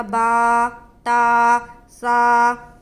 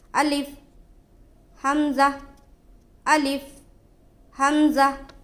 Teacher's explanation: صرف الف اور حمزہ، الف اور حمزہ ان دونوں حرفوں کو جلد ادا کریں گے، انہیں کھینچنا نہیں ہے